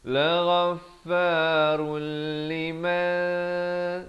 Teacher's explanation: Di sini fa bersabdu, la ghaffa. Di sini ra tanwin di depan bertemu lam, daripada run jadi rul, masuk tanpa dengung